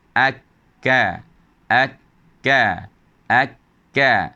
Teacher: Tempat pertemuan lidah, pangkal lidah akan bertemu dengan penghujung lelangit lembut. Dengan berada dekat langit keras, tapi penghujung bagi lelangit lembut ini, maka akan terhasil bunyi huruf kaf.